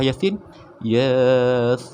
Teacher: Ya tu 2 harakat, sin tu 6 harakat.